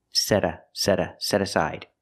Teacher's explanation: you hear the T changed to a fast D